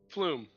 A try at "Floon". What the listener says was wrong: That sounds like a log flume. It's an N, by the way.